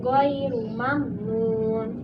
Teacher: Mad Arid lissukun maka dibaca 6 harokat